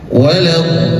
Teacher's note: Ingat di huruf lamnya ada tasydid maka agak sedikit ditekan. Jangan sampai lolos saja jangan.